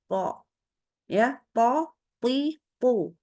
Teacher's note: Jadi dia tebalnya itu adalah karena kita naikkan pangkal lidah dan juga tengah lidahnya sekaligus.